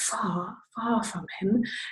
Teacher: we don't pronounce the R sounds at the ends of words in general. So you get far from him, which might sound weird if you're expecting to hear an R sound.